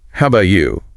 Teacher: With a downward inflection because she's going to follow up with a more specific question. The tone of voice sets up the next part of the conversation.